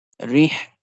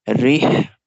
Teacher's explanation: Ra goes to Ha. Rih, this Ha is from the middle part of the throat.